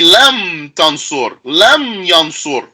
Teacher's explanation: So you'd say lam tansur, lam yansur, with no vowel at all on that last letter.